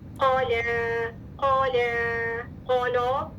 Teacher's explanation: क़ाफ मुफ़ख़म लेकिन लाम मुरक़क़